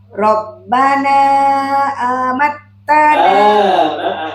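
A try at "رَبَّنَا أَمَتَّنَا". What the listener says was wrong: Jangan panjang. Rabbana amattana.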